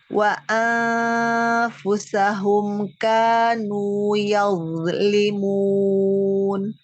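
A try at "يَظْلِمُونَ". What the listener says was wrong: Yaznya bagus tapi jangan mantul. Yazlimuna.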